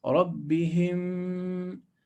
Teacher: Close your lips. Merge those two memes, the first and the second, together into one.